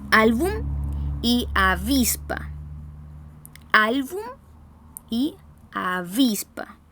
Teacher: reciben la carga de voz en la penúltima sílaba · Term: palabras graves